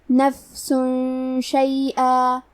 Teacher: آخری میں سین پہ تنوین پیش ہے، پھر حرف شین ہے کلمت شیئن، شین حروف الاخفاء میں سے ہے، تو ہم یہ حکم کو غنہ کے ساتھ ادا کریں گے